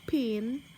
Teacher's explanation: The P sounds in pin is said to be aspirated